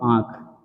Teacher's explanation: नाक और मुख दोनों का इस्तेमाल हो रहा है